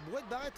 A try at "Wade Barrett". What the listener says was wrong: C'est Wade Barrett, parce que là vous l'avez prononcé Brouette Barrett.